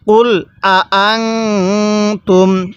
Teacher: এরপরে কুল আং তুম, এই নুন সাকিনের মধ্যে আমরা গুন্নাহ করব, কারণ নুন সাকিনের পরে তাটি হলো ইকফার হরফ।